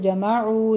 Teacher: جمعو میں واو مدہ ہے، عین کو وسط حلق سے ادا کرتے ہوئے دونوں ہونٹ گول کر لیجئے، واو مدہ ادا کرنا ہے۔